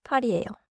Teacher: 팔이에요에서 리을 받침이 너무 길지 않게